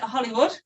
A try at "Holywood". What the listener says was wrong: Holywood, not Hollywood. There's one L. It's Holywood.